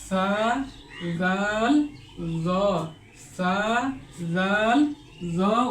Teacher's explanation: জিহ্বার আগা সামনের উপরে 2 দাঁতের আগার সঙ্গে লাগিয়ে সা জাল জ উচ্চারিত হয়। সা জাল জ, এই 3টা হরফ একটু নরম করে উচ্চারণ করতে হয়।